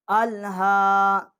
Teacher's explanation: یہ الف جو ہے یہ حمزہ ہے، اس کو ہم لام کے ساتھ مقصد ہے اس کو ملا لام کے ساتھ ہم اس کو پڑھیں گے اور جو اس کی آواز ہے وہ حلق سے ہی آنی چاہیے، اور اس کے آگے جو ہا ہے اس کے اوپر کھڑی الف ہے، یہ ایک الف جتنا اس کو مقصد ہے ہم کھڑی زبر جو ہے ایک الف جتنا ہم اس کو کھینچیں گے